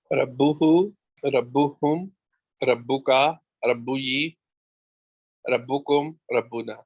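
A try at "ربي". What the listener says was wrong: آپ کہیں گے ربو کا اور ربی, ربو یہ نہیں ہوگا, باقی نیچے زیر آ جائے گی, ٹھیک ہے. ربو کا, ربی, اس چیز کا بہت دھیان رکھنا ہے.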